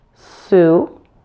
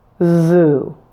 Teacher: you do that now let's start with the name sue and we're going to add voicing to that s at the beginning of Sue to make the word zoo